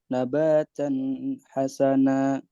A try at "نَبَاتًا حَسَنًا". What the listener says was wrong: nggak perlu ditahan. Nabatan hasana